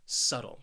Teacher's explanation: this word has two syllables and the stress is on that first syllable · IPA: /ˈsʌtl/